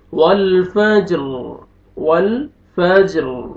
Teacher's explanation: جب سٹاپ کریں گے را ساکن کریں گے تو را کو پر کریں گے، کیونکہ را سے پہلے جو لیٹر ہے وہ ساکن ہے، ساکن سے پہلے فتح ہے، را کو پر کریں گے۔